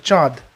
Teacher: তো চন্দ্র থেকে চাঁদ হয়ে যাচ্ছে, এটা কী ধরনের পরিবর্তন, এটা হচ্ছে নাসিক্যি ভবন, কারণ দেখো এখানে একটা চন্দ্রবিন্দু আসছে এবং উচ্চারণটা নাক থেকে বেরিয়ে আসছে, চাঁদ। ওকে, নেক্সট আসবো নাম্বার 22, কার্পাস থেকে কাপাস, কার্পাস থেকে কাপাস।